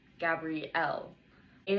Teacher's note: It has four vowels, ends with an e, and the stress is on the final syllable